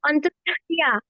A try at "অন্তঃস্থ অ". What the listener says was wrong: অন্তস্থ ইয়া নয়, এটা হবে, আপনি আমাকে আগে বলতে দেন। এটা হবে অন্তস্থ অ। অন্তস্থ অ।